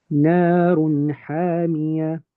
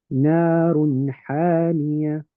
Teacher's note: I make the n sound of the tanween nice and clear. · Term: idhar